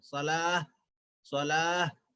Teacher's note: چھوٹی ہا کی آواز آنا یہاں پر. صلاح صلاح چھوٹی ہا جو ہے سینے کی طرف سے نکلتی ہے. ہاں جیسے بھاگتے ہوئے آئے تو ہم جیسے سینہ ہانپتا ہے, ہانپتے ہیں انسان, تو اسی طریقے سے ہا آخر کی آواز اس طریقے سے آنا ہے.